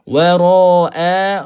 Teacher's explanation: ra dibaca dengan panjang. Mad wajib muttasil dalam satu kalimah.